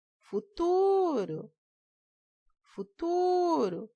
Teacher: Então, o tu. Então, o tu é a sílaba tônica.